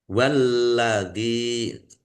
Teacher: lamnya ada tasdidnya di baca double dan ditekan